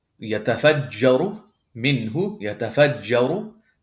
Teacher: This ra damma is going to be heavy. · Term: tafkhim